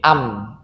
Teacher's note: kita membenturkan bibir bawah dan bibir atas, atau sebaliknya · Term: mim